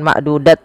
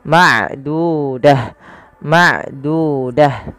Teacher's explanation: Apabila ada ta marbutah letak di akhir bacaan kita maka ia diganti dengan huruf ha awalnya ma'dudah maaf kalau dimad dibaca bukan ma'dudat lagi tapi ma'dudah